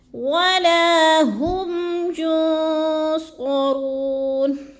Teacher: اخفا ہے، نون ساکن کے بعد صاد آ گیا حروف اخفا میں سے تو ادھر آواز کو ناک میں چھپا کر پڑھنا ہے، یعنی اخفا کرنا ہے، ینصرون، رو کو تھوڑا سا لمبا کر دینا ہے، وہ مدہ ہے